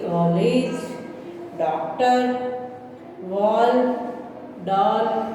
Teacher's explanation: यह आ और ओ के बीच की ध्वनि है